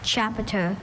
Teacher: Once again, it hinges on the schwa in that middle syllable. That sound that could be any vowel.